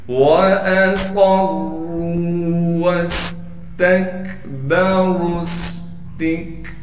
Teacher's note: वाव को सीन साकिन से मिला देंगे इसलिए कि सीन साकिन है। सीन में सीटी भी अदा करेंगे।